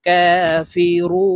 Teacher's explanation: তিন আলিফটা নিয়ে নুনকে সাকিন করে ফেলবো